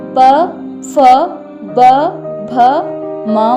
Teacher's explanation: इनका उच्चारण स्थान ओष्ठ है और वर्ण का नाम ओष्ठ है।